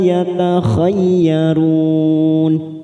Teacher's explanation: yatakhayyarun mat arid sukun 4 harokat kita panjangkan.